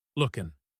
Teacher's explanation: In fast English, the G at the end of looking is dropped.